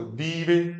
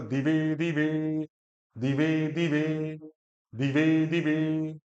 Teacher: तो दी छोटा और ए जो है बड़ा, इस तरह से है।